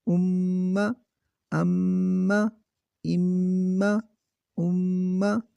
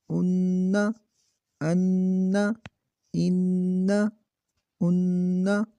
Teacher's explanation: میم مشدد نون مشدد پہ ہمیشہ غنہ ہوگا